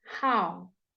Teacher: How? And again, you are closing your mouth into a w sound. W at the end of how.